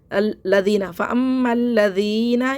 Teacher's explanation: زبان دانتوں میں درمیان دبائیں